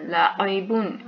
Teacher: لام زبر لا، عین زیر عی، لاعی، با دو پیش بن، لاعیبن، عین وسط حلق سے ادا ہوگی